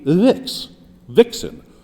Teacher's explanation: And a vixen, as a word, is a trochee. It has a stress on the first of the two syllables.